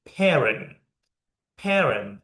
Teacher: This mean we stress in the first syllable